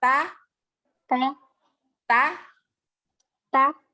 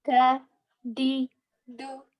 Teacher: cuman ta itu ada nafas yang mengalir. Kalau da tidak